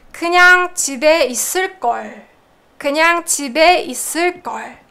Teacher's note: So you have a lower pitch at the end